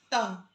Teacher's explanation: त बोल के देखिए कि दांत आपकी जीभ को लग रहे हैं, यानी दंत्य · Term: दंत्य वर्ण